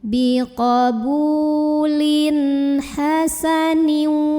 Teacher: Kemudian di sini ada idhar halqi. Karena ada tanwin kasrah bertemu dengan huruf halqi atau huruf tenggorokan ya, yaitu ha. Maka tanwinnya ini dibunyikan dengan jelas. Jadi ini bunyinya an ya.